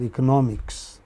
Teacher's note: The stress on the third syllable from the beginning.